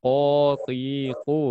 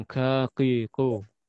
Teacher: Dibandingkan kaf, dibandingkan huruf kaf, dia tidak terangkat lidahnya bagian belakang, makanya tipis.